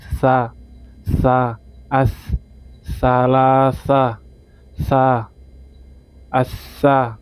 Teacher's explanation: Seolah-olah di depan ada huruf t kemudian s baru a. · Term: huruf tsa